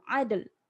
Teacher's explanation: matikan lam tu, adl. Del, ada bunyi del kat belakang tu.